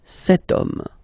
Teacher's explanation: H is not pronounced, so the first sound that we hear is O, okay, and then it will follow the same rule.